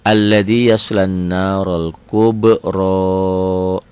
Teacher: dibaca double, panjang 1 alif sampai 1 alif setengah, 2 sampai 3 harokat, dan gunnah dengung ke hidung